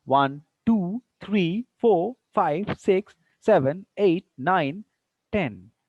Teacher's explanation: See, on the 10, falling tone is there. So at the end, falling tone is there